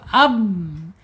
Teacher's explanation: ba secara mahraft ada di asyafatain dua bibir terkatup ab kemudian ada di sifatnya yaitu ee asyidah tertahannya suara ab enggak boleh ab enggak boleh ya karena tertahan dia.